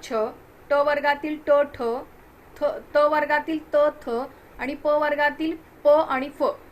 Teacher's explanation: हे कठोर श्वासाचे आहेत किंवा श्वासाचा उपयोग केला जातो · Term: कठोर व्यंजने